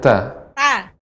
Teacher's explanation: Adapun ta itu bagian gigi bagian dalam ya pangkalnya pangkal gigi seri